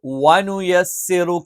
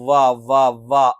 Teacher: വ എന്നുള്ളത് ചുണ്ട് വൃത്താകൃതിയിൽ വെച്ചുകൊണ്ട്തന്നെ ഉച്ചരിക്കണം